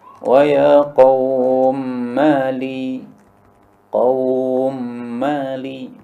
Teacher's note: Karena mim yang pertama disukun kemudian diidghamkan pada mim yang kedua. Nah, di sini ketahuilah bahwa ini panjangnya qaum ini boleh 3 bacaan. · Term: idgham kabir